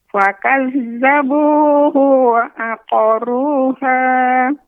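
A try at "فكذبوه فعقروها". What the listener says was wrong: Fa, huruf fa, Nek, bukan huruf wa. Fakadzabuhu fa'aqaruha.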